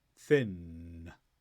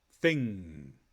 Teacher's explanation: the back of your tongue touches the top of your mouth to make a block the air goes through your nose but there's no release